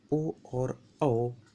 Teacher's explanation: ओ और औ ये जो है कंठोष्ठ वर्ण है